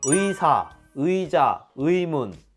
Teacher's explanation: 이중모음 의를 발음할 때 대원칙은 이중모음 그대로 의로 발음하는 거예요